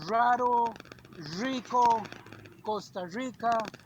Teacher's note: in Costa Rica you pronounce the r more like an American r